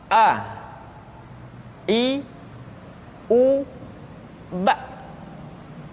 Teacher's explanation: Yang pertama adalah huruf A. Makhraj ketika mengucapkan huruf A berada pada tenggorokan yang terjauh.